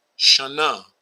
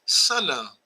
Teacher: In Arabic, the only thing that takes place, and which is the next thing that we're going to here, the only thing that takes place is what's typically sh becomes just s, as shalom becomes salam